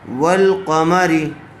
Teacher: جیسے والقمری، واو لام زبر ول، تو یہاں واو کے بعد جو الف ہے اس کو چھوڑ دیا گیا، الف یہاں پر سائلنٹ ہو گیا، ڈائریکٹ واو کو لام سے ملایا گیا۔ ول، واو لام زبر ول، قاف زبر قا، والقا، میم زبر ما، والقمہ، را زیر ری، والقمری۔ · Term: حروف قمری